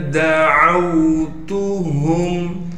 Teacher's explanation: دال کو بغیر کھینچے پڑھیں گے، عین کو آگے واو ساکن سے ملا دیں گے